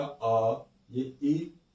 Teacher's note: जिन स्वरों के उच्चारण में मूल या ह्रस्व स्वर से दुगना समय लगता है उन्हें दीर्घ स्वर कहते हैं।